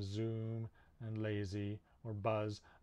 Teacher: that's the z sound which is voiced and it's a fricative produced at the alveolar ridge so it's like s s is voiceless z is voiced uh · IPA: /z/